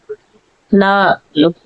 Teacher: நாவின் இரு பக்கங்கள் தடித்து மேல் அன்னத்தின் நடுப்பகுதியை தொடுவதால் லகரம் தோன்றும். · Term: நகர லகரம்